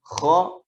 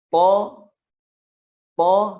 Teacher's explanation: Jadi bisa dirasa-rasakan pangkal lidahnya itu terangkat. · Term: huruf isti'la